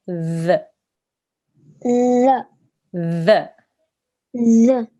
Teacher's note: we don't want to have a z sound in there there's no buzzing sound in it um imagine you're saying the word the or the word these